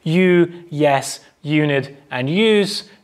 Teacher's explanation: So Y is in what we call post-alveolar position, so it's somewhere between the alveolar ridge and the hard palate in pronunciation